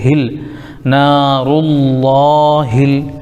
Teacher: رلہ، نارلہ، پھر ہا کے نیچے زیر لیکن لام ساکن ہے، ہا کو لام میں ملائیں گے